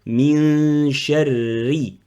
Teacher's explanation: Donc, la lettre shin, elle est très très fine, elle est amincée.